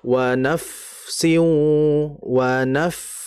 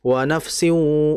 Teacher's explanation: Di mana fa mati ini dia itu fa punya sifat yang berdesis dan juga ada aliran dalam sifatnya. Maka dialirkan dulu.